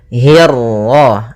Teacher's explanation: hi-nya tipis, kasrah bertemu ra yang tebal. Nah, di sini kita namakan dengan ra tafkhim